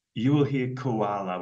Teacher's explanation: you will hear koala with a schwa sound as the second sound there